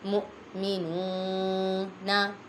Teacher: حمزہ ساکنہ کو جھٹکا دے کر پڑھیں گے اور نون پہ واو مدہ ہو رہا ہے، ایک الف یعنی 2 حرکات کے برابر کھینچ کر پڑھیں گے۔